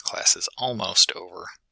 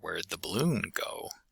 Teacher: stress is placed on the most focused word, and after that the pitch drops in the sentence. So if you say something like class is almost over, or where'd the balloon go, you have those highlighted words where the stress goes up and rises, but then after that it falls through the rest of the sentence. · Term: rise-fall intonation